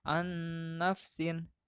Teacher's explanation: nun mati dibaca lebur menghadapi huruf idgham yaitu nun